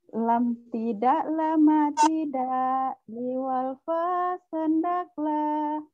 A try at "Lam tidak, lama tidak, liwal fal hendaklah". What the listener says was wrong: Itu nadanya udah maju duluan. Rendah dulu. Lam tidak, lama tidak, liwal fal hendaklah.